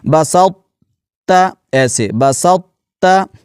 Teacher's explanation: جب طا کو ادا کرتے ہیں تو زبان کا جو درمیان ہے وہ اوپر والے تالو کے ساتھ مل جاتا ہے، تو اس صفت کو باقی رکھتے ہوئے اس لفظ کو پڑھنا ہوتا ہے۔ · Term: اطباق